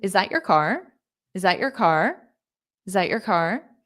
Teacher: But you won't hear the T at the very end.